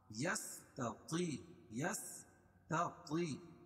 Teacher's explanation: تا اور طا دونوں میں فرق ہے، تا کو باریک پڑھیں گے اور طا کو موٹا پڑھیں گے، کیونکہ طا حروف مستعلیہ میں سے ہے.